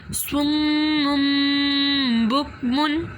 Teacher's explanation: 2 پیش کے بعد جو بایا ہے وہاں پر بھی گنہ کریں گے، اس کی آواز کو میم سے چینج کریں گے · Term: اقلاب